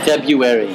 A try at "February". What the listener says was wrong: No, you're saying February. You're saying the U before the R. It's February. It's February. February. Because there's an R. Everyone drops the R.